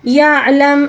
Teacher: عین کو حلق کے درمیانی حصے سے ادا کریں گے اور ساکن کو وقف کے دوران تبدیل نہیں کریں گے، ٹھیک ہے، جب ہم وقف کریں گے تو ساکن کو تبدیل نہیں کیا جائے گا، ساکن اسی طرح ہی آئے گا، ٹھیک ہے۔